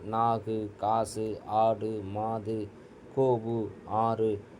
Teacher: இது வந்து வல்லின எழுத்துக்களோடு உகரம் சேருகின்ற பொழுது குசுடுதுபுற என்று மாறும். ஆறு வல்லின எழுத்துக்களோடு தனக்குரிய ஒரு மாத்திர அளவிலிருந்து குறைந்து அரை மாத்திரை அளவாக குறைந்து ஒளிப்பதற்கு பேரு குற்றியலுகரம்